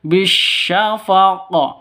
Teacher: Cara bacanya bisyafaq, harus dipantulkan ke huruf qafnya. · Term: qalqalah kubra